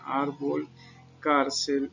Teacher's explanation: estas palabras son donde llevan la mayor fuerza de voz en la penúltima sílaba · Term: palabras graves